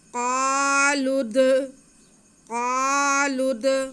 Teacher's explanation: आगे लाम पे पेश है और उसके बाद जो लफ्ज़ आ रहा है उसका दाल साकिन है, तो लाम का पेश हम दाल के साथ मिलाएंगे। क़ालुद, दाल जो है वो हुरूफ़ क़लक़ला में से है, इसलिए हम इसे जुम्बश दे के पढ़ेंगे। क़ालुद, क़ालुद, इन पे पेश है, इसे बिल्कुल भी नहीं खींचना।